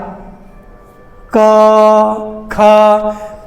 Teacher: इन वर्णों का उच्चारण स्थान कंठ है, कंठ से उच्चरित होता है